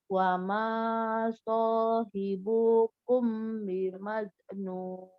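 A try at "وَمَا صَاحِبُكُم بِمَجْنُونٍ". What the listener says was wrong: Mim ketemu ba, tadi kan ikhfa ya. Wajib dengung. Hati-hati nih. Hai, sohibukum. Huruf jim di sebelah sini. Huruf jim. Sohibukum. Majnun.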